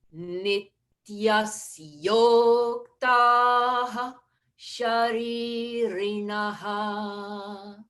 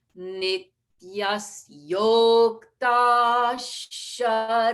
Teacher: So I blended visarga with the sha.